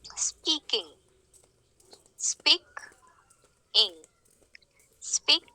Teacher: the second syllable does not get the stress so it remains unstressed · here the first syllable is getting the stress the second syllable is unstressed then this kind of a pattern is called trochaic pattern · The first syllable gets the stress, speak. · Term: Trocaic